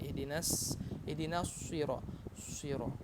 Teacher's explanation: Tapi kalau kita tidak tahu ilmu sifat huruf, maka kita pasti akan mengucapkan ihdinas sira, pasti akan monyong bibirnya, sira, karena ingin mengikuti bacaan tebal, bacaan huruf shad